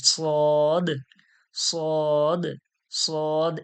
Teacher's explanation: এটা সিরসির ও মোটা আওয়াজ